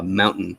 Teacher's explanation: sometimes our T's in the middles, they just turn into what linguists call a glottal stop